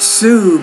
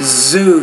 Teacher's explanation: It's more not Sue, but Zoo. You have to pronounce that Z with more vibration. It's not an S.